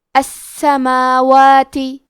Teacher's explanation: کلمت السماوات میں سین پہ تشدید ہے تو ہمیں 2 حرف کے برابر سین کو پڑھنا ہے. میم پہ کھڑا زبر ہے اور واو پہ بھی کھڑا زبر ہے، یہ دونوں مد الف ہے تو ہم یہ دونوں مد کو برابر سے ادا کریں گے